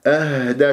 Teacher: الهاء الساكنة تتجلى الصفات فيها، لازم نبين الهزة بمنطقة أقصى الحلق